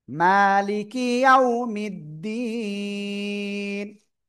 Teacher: থেমে পড়লে নুন অক্ষরের উপরে কি হবে? সাকিন হবে, সাকিন। সাকিন দিয়ে পড়বো, ক্লিয়ার? এবার তার আগে কি এক আলিফ মাদ রয়েছে, তো এক আলিফের জায়গায় তিন আলিফ হয়ে যাবে এবার